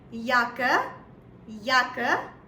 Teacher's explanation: So it sounds more towards a Y rather than a J.